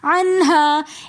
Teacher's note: عنہا کے ساتھ الف مدہ بھی ہے تو اس لیے ہم نے اس الف کو تھوڑا سا ایک الف کی مقدار کھینچ کر پڑھا